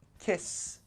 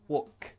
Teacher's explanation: none of these have a vibration in the throat they are voiceless or unvoiced